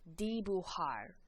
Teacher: Remember that J in Spanish makes a H sound, like an English H.